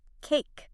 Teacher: You begin with an open position and glide up to a closed position. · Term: gliding